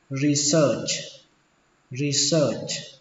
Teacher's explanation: Âm ở đây là âm ơ, mặc dù nó ghi là e và a nhưng mà đọc là ơ.